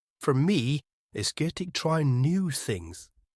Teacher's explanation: For me, it's good to try new things. Here, try new things is stretched out a little bit to show important information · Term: stress